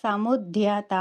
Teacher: ధ్యా అన్నప్పుడు కొంచెం ఒత్తిడి ఇవ్వాలి, తా అన్నప్పుడు దీర్ఘమిస్తూ ఆపాలన్నమాట